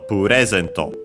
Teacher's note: The accent in standard Japanese is on the re